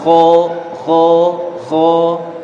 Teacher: Karena sifatnya dia rokhawa, suaranya ngalir, maka langsung keluar ringan.